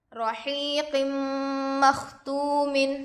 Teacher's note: قاف پر 2 زیر ہے، تنوین ہوگا، تنوین کے بعد حروف یرملون میں سے میم دوسرے کلمے میں آ کر ہے، اس لیے غنے کے ساتھ ملا کر پڑھیں گے۔ اس کو ادغام مع الغنہ اور ادغام ناقص بھی کہتے ہیں۔